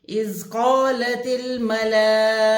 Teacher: اذ قالت الملائکۃ، اذ حمزہ زیر زال، اذ حمزہ کی زیر زال کی جزم سے ملے گی، اذ سیٹی کی آواز نہ آنے پائے. قالت کاف کو موٹا پڑھیں گے، حروف مستعلیہ میں سے ہے، یعنی کہ موٹے حروف میں سے ہے.